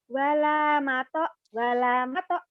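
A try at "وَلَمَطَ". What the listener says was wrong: Nggak ada yang panjang. Walamata. Walamata.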